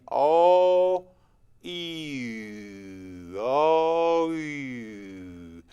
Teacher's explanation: my tongue comes forward the back of my tongue comes forward the front of my mouth the shape gets a little smaller